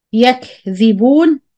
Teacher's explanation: When you see calf ساكن, remember to do همس or you push air. This called the همس of the calf.